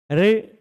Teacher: रे बोलने में जीभ ऊपर की ओर मुड़ती है, वो जहां पर मुड़कर जा रही है, टच तो नहीं कर रही है ऊपर, पर फिर भी वहीं से हवा को निकलने दे रही, इसलिए उसको उस स्थान को मूर्धा कहा जाता है।